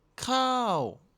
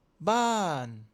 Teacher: Le secret c'est vraiment l'amplitude. Il faut que ça commence vraiment haut, plus haut que ta voix normale et que ça finisse vraiment bas. N'ai pas peur d'exagérer le mouvement. · Le ton descendant est un des tons les plus dynamiques. La voix doit commencer haut et descendre de façon nette et rapide.